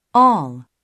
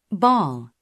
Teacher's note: 처음에 혀의 옆날에 힘을 주어 올려주는 발음에서 시작해서 입을 크게 벌려주면서 입술을 오픈 라운딩을 만들어주고 이를 통해서 혀끝을 뒤로 당기고 혀 뒷부분을 위로 부풀어 올려주는 그런 발음입니다.